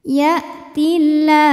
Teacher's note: Kemudian alif lamnya dinamakan dengan alif lam syamsiyah karena alif lam menghadapi huruf syamsiyah yaitu lam, maka alif lam tidak dibaca atau dinamakan dengan idgham syamsi.